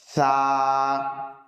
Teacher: সা বলার সময় আমাদেরকে খেয়াল রাখতে হবে যে আমাদের যেন জিভটা হালকা সামান্য একটু বার হয়। যদি আমাদের জিভ সামান্য একটু বার না হয় তাহলে কিন্তু আমাদের সা শব্দের উচ্চারণ সঠিকভাবে হবে না।